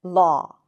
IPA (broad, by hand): lɑ: